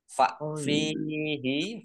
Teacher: fa kasroh ya sukun matobi'i. Dua harokat.